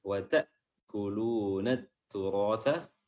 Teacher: huruf ra di sini tebal, tafkhim, ya, ra karena dia berharokat fathah, dan tha berarti kan turata, makhraj huruf tha adalah ujung lidah diapit kedua gigi, ta, ya.